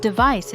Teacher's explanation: the word device is pronounced with a clear V sound and stress on the second syllable